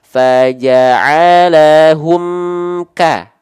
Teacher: me-nya ini dilepaskan setelah melafalkan k-nya huruf berikut setelah mim sukunnya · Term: Idhar syafawi